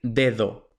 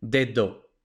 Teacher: un nativo va a decir dedo, con la primera D fuerte y la segunda D suave